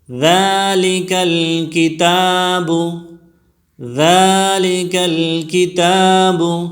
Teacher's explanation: ذالک میں ذال بالکل نرم پڑھی جائے گی، اور اس کو ایک الف کی مقدار کھینچ کر پڑھا جائے گا، اس وجہ سے کڑا زبر ہے. الکتاب میں بھی کڑی زبر ہے، اس کو بھی ایک الف کی مقدار کھینچ کر پڑھیں گے. ذالک الکتاب.